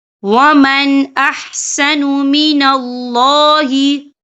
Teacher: افحکم الجاہلیت یبغون ومن احسن من اللہ، یہ دیکھیں ومن، یہاں نون ساکن ہے، نون ساکن کے بعد جو ہے حمزہ آ رہا ہے، اور حمزہ جو ہے حروف ہلکی کا ورڈ ہے، تو ہم یہاں اظہار کریں گے، ہم اسے بنا غننے کے پڑھیں گے۔